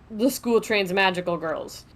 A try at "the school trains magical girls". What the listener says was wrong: You need to enunciate a little better because it sounded like you said the school trans magical girls. Not the It sounded like you said trans instead of trains, so try that.